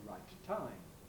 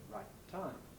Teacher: So we have a single kind of long plosive that bridges the gap between the two of them. You make the closure at the end of the I, right. · But the point is that the two phonemes, the T in right and the T in time, are pronounced differently from one another and in special ways that require attention. Namely, the first T in right should not be exploded. Here we have a sequence of plosives, sequence of identical plosives, and as I hope you know, when this arises, we don't usually explode the first one.